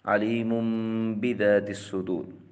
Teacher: میم ساکن کے بعد حروف ہجا میں سے با آ جائے تو وہاں اخفاء شفوی مال غنہ ہوگا